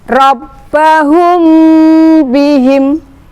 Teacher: dengan bibir terkatup, kedua belah bibir terkatup sambil mendengung sebanyak 2 sampai 2,5 ketukan. Rabbahum bihim, mem sukun atau mem mati bertemu dengan huruf ba. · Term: ikhfa syafawi